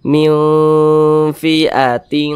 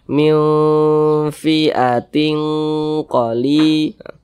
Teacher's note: Akan tetapi karena dia awsat, maka kadar samar dan kadar dengungnya pun dia seimbang. Nah, kita baca miu-nya itu kita tahan, kita panjangkan karena dia digunahkan atau didengungkan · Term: ikhfa hakiki awsat